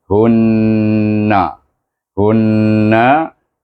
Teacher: mad asli sebelum wau baris hadapan dan Hun itu bertasdik dengan huruf nun itu bertemu dengan Nun yang bertasdik dibaca dengan wajibul gunah